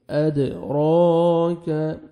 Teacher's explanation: را کو آپ نے موٹا کرنا ہے اور 1 سیکنڈ کھینچنا بھی ہے